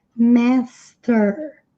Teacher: ER em inglês tem esse som enrolado, fechado, nasal, master. Then watch the master at work.